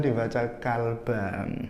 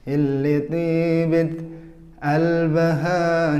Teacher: Jadi qaf itu bisa dibaca hamzah.